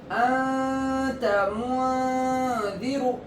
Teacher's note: انت میں نون کی آواز ناک میں چھپائیں گے، اسی کو اخفا کہتے ہیں.